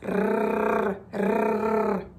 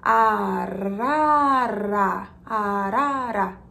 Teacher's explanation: Então, o som do flap T acontece quando você faz. A língua bate rapidamente atrás dos dentes. Se você tiver alguma dificuldade para pronunciar esse som, tenta falar arara bem devagarzinho e você vai entender como ele acontece.